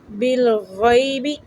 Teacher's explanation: یا لین ہے، اس کو نرم پڑھیں گے۔